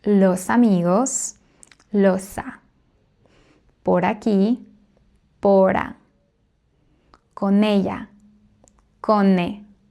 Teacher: the final consonant of the first word links to the first syllable of the second word, which starts with a vowel